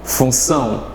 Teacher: o N está nasalando a vogal U